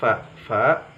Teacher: dua gigi seri kita menyentuh bibir bagian tengah dan terasa ada udara yang mengalir